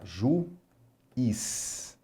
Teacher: Nós temos duas vogais juntas na palavra, mas em sílabas separadas. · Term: hiato